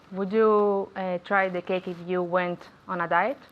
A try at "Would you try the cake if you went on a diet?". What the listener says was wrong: Very good pronunciation.